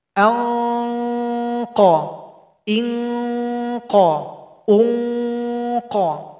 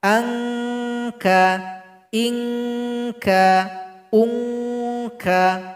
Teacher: Kof ini dibaca tebal sedikit Kaf tidak dibaca tebal